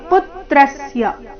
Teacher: ಪು ಮತ್ತೆ ತ್ರ ಮೇಲೆ ಆಘಾತ